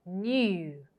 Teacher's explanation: It's a fusion of the ya with the long oo sound